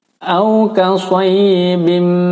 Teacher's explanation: Di sini tanwin bertemu mim, hukumnya adalah idgham bi gunnah. Ya, jadi ditahan di dengung 4 ketukan.